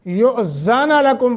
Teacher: حمزے کو جھٹکا دے کے پڑھیں گے، حمزہ ساکن ہے یعنی مجزوم ہے